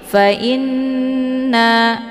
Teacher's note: nun yang bertasydid dibacanya secara mendengung karena ini merupakan ghunnah musyaddadah